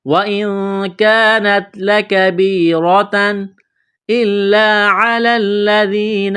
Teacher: تنوین کے بعد حروف حلقی میں سے حمزہ ہے تو تنوین پر غنہ نہیں کریں گے، آواز ناک میں نہیں چھپائیں گے